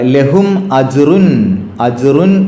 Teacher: അവിടെയുള്ള തൻവീനിനെ ഇൽഹാർ ചെയ്യണം, അതിൻ്റെ നൂനിൻ്റെ ശബ്ദത്തെ വെളിവാക്കണം. അപ്പോൾ റുൻ എന്ന തൻവീനിലുള്ള നൂനിൻ്റെ ശബ്ദം പുറത്തേക്ക് കേൾക്കണം.